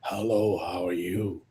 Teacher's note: And this is a kind of horse voice. You can see that the vocal cord controls are not very good which happens in old age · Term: dysphonia